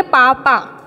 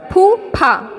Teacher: देख, पापा में बोला पापा, जल्दी से हो गया, मतलब थोड़ी वायु निकली है। पापा में क्या हुआ? थोड़ी वायु निकली है।